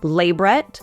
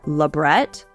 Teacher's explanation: You will probably hear it pronounced differently, as either LAbret or laBRET.